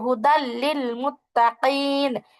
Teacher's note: র আর লাম এই দুটিতে আমরা গুণনা করতে পারি না, তাই হুদাল্লিল মুত্তাকিন তানবিনের পরে লাম আসা সত্ত্বেও ওখানে গুণনা ছাড়া পড়ছি